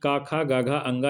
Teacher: घा का जो उच्चारण स्थान है वो है कंठ, क्योंकि का, खा, गा, घा, अंगा ये सब कंठ से बोले जाते हैं